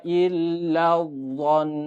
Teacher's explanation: 2 harokat ditahan karena tasydid bebarengan dengan huruf gunah